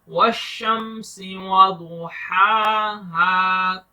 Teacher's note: دعد کو موٹا پڑھنا ہے, دس از اے ہیوی لیٹر, اور ہا کو تھوڑا لانگ کر کے پڑھنا ہے بیکاز اس کے اوپر الف کھڑا زبر ہے اس لیے, اور یہ الف مدہ ہے لاسٹ میں, اس لیے تھوڑا سا اس کو لمبا کریں گے.